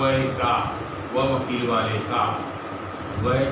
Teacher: दंतोष्ठ वर्ण है। मतलब वह का उच्चारण दांत और ओष्ठ से किया जाता है।